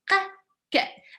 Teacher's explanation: And they are both of them, they are stopped, because you sing ka, ka. It's not like sh, they are not like really long. They are not continuous. They are like stops.